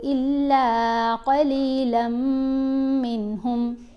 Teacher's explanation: لام کو میم سے ملاتے ہوئے گننا کریں گے